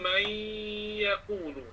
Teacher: nun tidak lagi diletakkan di situ sebab dia telah diidghamkan, dimasukkan pada huruf selepas, maka bunyinya man yaqulu. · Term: nun yang idgham